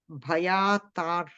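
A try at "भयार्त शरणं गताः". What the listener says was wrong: We should say the Bhayartha. Ra comes first and then the Bhayartha Sharanam Gataha.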